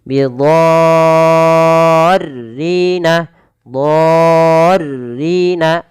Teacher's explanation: Dha di sini wajib dipanjangkan 6 harokat teman-teman, bukan lagi 4 atau 5. Tapi 6 harokat. · Panjang dulu 6 harokat baru masukkan tasydid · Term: mad lazim